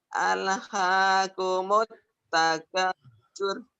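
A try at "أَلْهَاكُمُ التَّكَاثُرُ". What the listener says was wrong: Alhaakumut takatsur. Iya boleh alnya, jangan ale, jangan ada e-nya. Al.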